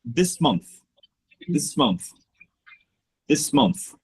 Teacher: I'm actually connecting them together in a very smooth way in a very natural way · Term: linking words